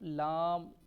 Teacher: لام کو لمبا کریں گے 5 الف کی مقدار میں